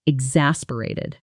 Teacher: The stress is on the second syllable. In fast natural speech, the middle often blurs together.